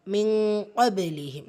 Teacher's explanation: நூனை பாதியாக மறைச்சி இந்த இடத்துல குன்னா செஞ்சு ஓதணும் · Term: இஹ்ஃபாவுடைய சட்டம்